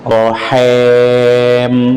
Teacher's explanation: jangan ke rongga hidung. Rahim, tapi berporos di rongga mulut